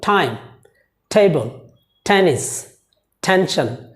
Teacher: এই ওয়ার্ডসগুলো আমরা যখন প্রনাউন্সিয়েশন করব, যাতে আমাদের মুখ দিয়ে বাতাস বের হয়, তার মানে আমরা টি বলবো না।